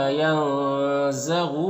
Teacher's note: نون کی آواز کو ناک میں چھپا کر ایک الف کی مقدار کھینچ کر پڑھیں گے۔ غین حروف مستعلیہ میں سے پر پڑھیں گے۔ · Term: اخفا